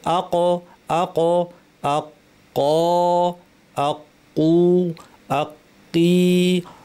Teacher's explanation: এখানে ছবিতে আপনারা দেখতে পাচ্ছেন কফের মাখরাজটা দেখানো আছে। জিহ্বার সবচেয়ে পেছনের অংশটা, উপরের যে আমাদের মুখের তালুটা, তালুর মাংসল অংশে লাগিয়ে কফ উচ্চারণ করা হয়।